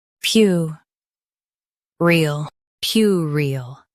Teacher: Stress p y u and keep erile light and quick.